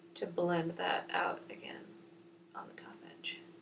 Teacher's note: that's a real vocal fry going on today